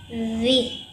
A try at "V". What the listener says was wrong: বি না, ভি।